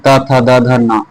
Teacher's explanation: जिन जिन ध्वनियों का उच्चारण ऊपर के दांतों पर जीभ लगाने से होता है उन्हें दंत ध्वनि कहते हैं। जैसे त वर्ग के पूरे आ जाते हैं।